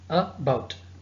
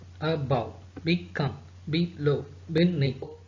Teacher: blindly we have to go with the stress on the second syllable. So that would be the first letter of the second syllable.